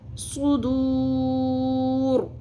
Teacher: رو کو آخر میں پر کرنا ہے